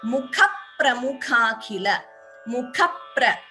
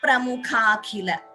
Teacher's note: You see that stress before P, an extra P is heard. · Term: Dvitvam